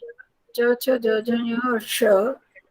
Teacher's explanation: च, छ, ज, झ, ञ और श जो है, ये वाला ये तालव्य है, तालु से बोले जाते हैं